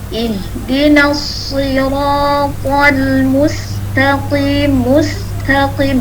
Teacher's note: Jadi sinnya tetap tipis karena dia istifal.